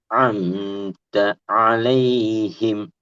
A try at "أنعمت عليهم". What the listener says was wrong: இப்ப நீ ஐன தொண்டையில உச்சரிச்சது சரி. அன்அம்த இன் அந்த நூனோட ஐனவல் சேர்க்கணும். திருப்பி அன்அம்த அந்த தேயோட அதுக்கு பின்னால வர ஐனையும் ஜாயின் பண்ணணும். அன்அம்த அலைஹிம் வளைஞ்சி வரும்.